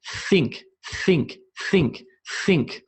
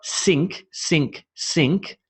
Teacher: i'm blowing the air between my teeth and my tongue